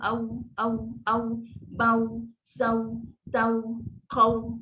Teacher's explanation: Waw sifat bibir kena muncung. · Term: waw sukun